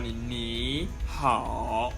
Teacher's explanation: the first third tone will sound like a second tone